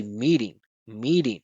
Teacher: When it's not in the beginning of a stress syllable, when it's not important and it's surrounded by vowel sounds, we don't stop the vibration. We just continue the vibration. That's why it turns into a D sound. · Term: flap T